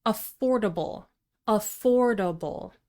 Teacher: Four syllables, stress the second syllable.